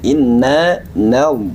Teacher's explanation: istial Ya baik huruf nun adalah huruf tarkid atau huruf istifal jadi tatkala kita membaca Nun ya maka kita jaga ke tipisan huruf nun